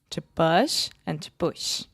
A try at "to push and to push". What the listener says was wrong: No, these are the same sound. To push and to put.